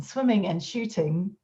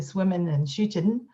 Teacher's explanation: I have the velar N in those words, but plenty of people have an alveolar N